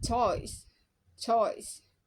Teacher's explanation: o o as in choice choice in British English pronouns with a Glide from o to E